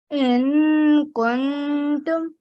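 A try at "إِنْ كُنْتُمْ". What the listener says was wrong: You don't read the noon sound all the way. Okay, don't say in. Stop before the na. In. Okay, there's a nasal sound. Kuntum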